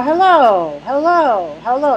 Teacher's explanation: there's a pitch change one of them was rising and the other one was falling